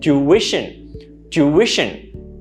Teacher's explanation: you pronounce it with three syllables with the stress in the second one